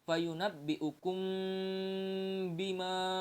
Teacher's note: dengan huruf ba maka mim sukun harus dibaca dengan samar-samar di bibir disertai dengan dengungan jadi bacanya fayunabbiukum bima seperti itu ya mim bertemu dengan mbak · Yang bacaannya disebut dengan ikhfa syafawi. Nah, apabila ada mim sukun bertemu dengan huruf ba, maka mim sukun harus dibaca dengan samar-samar di bibir disertai dengan dengungan